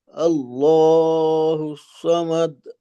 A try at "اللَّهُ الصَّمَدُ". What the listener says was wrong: এখানে আল্লাহু সামাদ, কলকলাটাকে আরেকটু বড় করা দরকার। সাথে সদের উচ্চারণটাকে আরেকটু মোটা করা, হুস স।